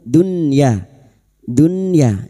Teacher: Hayatid dunya berikutnya nun sukun bertemu ya idhar wajib. Bertemunya nun sukun dengan huruf ya dalam satu kalimat idhar wajib. Nun sukun dibaca jelas tanpa mendengung. Dunya dunya ya jangan dibaca dunya tetapi dibaca jelas idhar wajib.